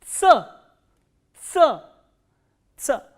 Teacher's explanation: This sound is produced when the tip of the tongue touches the lower teeth and the front part of the tongue closes the alveoli for a while.